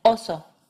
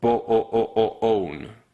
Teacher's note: O as in oso, which is similar to our first vowel in O as in bone. You just stay on that beginning O part.